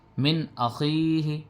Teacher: ہا زیر ہی، من اخیہ، یہاں پہ بھی اظہار ہو رہا، نون کو بغیر غننے کے پڑھ رہے ہیں، نون ساکن کے بعد حروف حلقی میں سے حمزہ آیا